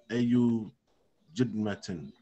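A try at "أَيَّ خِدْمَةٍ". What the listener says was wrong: It's a kha.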